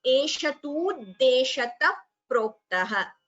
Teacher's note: a visarga followed by pa. So we have upadhmaniya